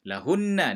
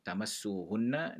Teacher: nun bersabdu, dia dibaca dengan dengung. Maknanya nun mati bertemu dengan nun, sebab tu dibaca dengan dengung.